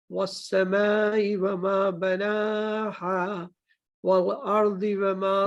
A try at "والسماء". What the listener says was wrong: والسماء میں مد ہے نا میم کے ساتھ, تو اس کو 5 فنگرز تک لمبا کرنا ہے.